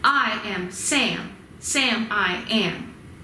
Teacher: strong weak strong strong weak strong or long short long long short